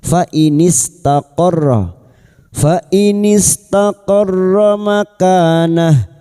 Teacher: Taqarra masuk pada huruf ra yang bertasdid, hanya masuk tanpa ditahan lama-lama, tanpa mendengung